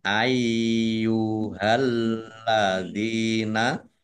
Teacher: Dibaca panjang, boleh 5, boleh 2 harokat. Yaknya dibaca double, ada tasdidnya. Dibaca ai dulu.